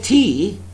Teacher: When I say tea, there is aspiration.